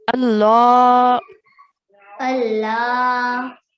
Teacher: Make sure you stretch the lam for the vertical fathah